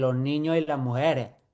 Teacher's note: Y esa e es una e abierta, no es una e cerrada, es una e abierta.